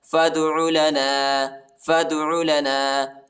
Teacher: فا کو دال کے ساتھ ملائیں گے، الف نہیں پڑھا جاتا، الف کے اوپر حرکت نہیں ہے اور دال کو جھٹکا دینا ہے، حروف قلقلہ کا حرف ہے